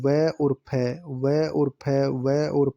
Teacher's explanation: व और फ दंतोष्ट हैं, दांत और होठ से बोले जाते हैं